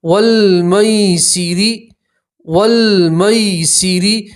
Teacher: را کے اوپر آپ وقف کریں گے تو زیر کی جگہ آپ را کے اوپر جزم پڑھیں گے. ٹھیک ہے، وقف کریں گے تو را کو آپ پور پڑھیں گے، موٹا پڑھیں گے، اور یہ یائے لین ہے اس لیے آپ اسے کھینچیں گے نہیں، جلدی سے پڑھیں گے.